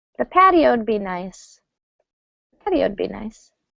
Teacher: Wood almost never gets stress gets reduced a lot. So patio and wood are going to contract.